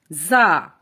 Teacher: را زا سختی سے ادا کرنا ہے، زبان کی نوک جو ہے اور اوپر نیچے کے دانت آپس میں ملیں تو زا ادا ہوتا ہے، سیٹی کی آواز آتی ہے